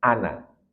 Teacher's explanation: Ana walaupun ada huruf madnya yaitu alif, tetap dia selalu dibaca pendek. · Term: qasr